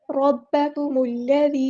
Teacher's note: लाम को मोटा नहीं करना